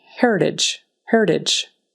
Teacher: the T in the middle is really soft, more like a D